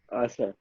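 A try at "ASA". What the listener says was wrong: क्या, आशा। ए एस ए बोला जाता है, आशा नहीं बोला जाता है।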